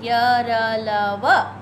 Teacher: अंतस्थ व्यंजन इन व्यंजनों को का उच्चारण करते समय जिह्वा जो है, जीभ जो है, मुंह के विभिन्न पार्ट्स को पूरा नहीं छूती है, हल्का हल्का छूती है ना। तो इसलिए इसको अंतस्थ व्यंजन कहते हैं।